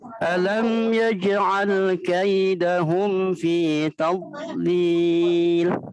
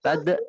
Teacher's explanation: dod sukun itu bukan termasuk huruf qalqalah. Jadi bacanya jangan sampai dipantulkan seperti qalqalah.